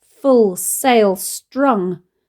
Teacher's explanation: the way the stress falls on all 3 words, one after the other